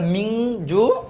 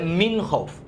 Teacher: নুন সাকিন অথবা তানবিনের পর গুণনা করে পড়তে হয় নাকির ভিতর লুকিয়ে। বাংলাতে 19 স্বরের মতো উচ্চারণ, যেমন বাংলা, রং, ইংরেজি যেটা লাগে এটা, তাহলে মিং হবে। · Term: গুন্না